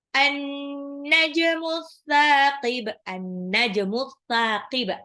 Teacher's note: An-najmu alif lam samsiyah, alif lamnya tidak dibaca, nunnya tasjid jadi an-najmu, dibacanya agak gitu.